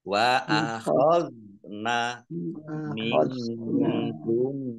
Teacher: Akhadna zal sukun bukan qalqalah ya, jangan dipantulkan · Nun sukun bertemu dengan huruf kaf, bacaan ikhfa dibaca samar-samar.